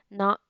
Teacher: நாவின் நுனி மேல்வாய் பல்லின் அடிப்பகுதியை தொடும்போது இந்த நகரமானது பிறக்கின்றது